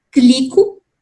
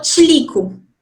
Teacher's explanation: essa criança está colocando uma africada no meio do ataque ramificado, isso não existe na língua adulta de jeito nenhum.